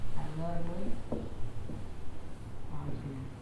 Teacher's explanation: Jadi domatain ketemu dengan huruf ain. Berarti cara membacanya adalah jelas, tidak berdengung atau tidak seperti hukum-hukum yang lain. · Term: izhar